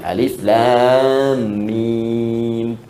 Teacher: Ketika Anda baca Quran, maka Allah memberikan gambaran seluruh makhraj itu secara umum, dari hawa ke lisan ke bibir, alif, lam, mim, setelah Al-Fatihah. Alif harful hawa, lam ke lisan, mim di bibir.